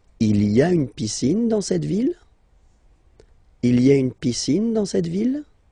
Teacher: don't forget to raise your voice at the end, because it's a question